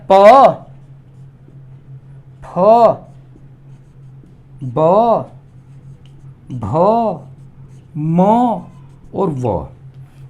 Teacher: ऊपरला होठ नीचेला होठ दोनों टकराते हैं, मिल जाते हैं। प, फ, ब, भ, म और व, ये होठों से बोले जाते हैं। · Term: ओष्ठे